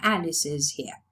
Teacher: In this case, it's realized as a voiced sound because n is voiced. And in Alice's here, it's realized as an extra syllable is because the previous sound is a sibilant.